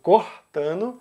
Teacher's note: Rio de Janeiro, Minas Gerais, Bahia, Pernambuco e Ceará vão usar o R raspado